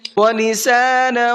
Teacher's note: یہاں پر تنوین کے بعد میں واو ہے، یہاں بھی غنہ کر کے پڑھیں گے۔